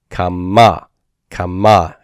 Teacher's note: It's not kama like the cal perfect 3fs, but kama, kama, accent that final syllable.